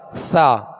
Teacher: اس کو سیٹی کی آواز میں نہیں پڑھتے، تو اس کو نرمی کے ساتھ پڑھنا، نرم پڑھنا، یہ اس کی خوبی ہے۔